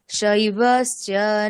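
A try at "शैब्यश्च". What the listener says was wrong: এই রসটা নেই ওখানে, দেখুন ওখানে বিয় আছে, যকার আছে না, তাহলে যকারটা উচ্চারণ কিরকম হয়? ঝু বর্ণের সাথে থাকবে তাহলে কিরকম হবে? কিয়, কয়ের সঙ্গে থাকলে কিয়, এরকম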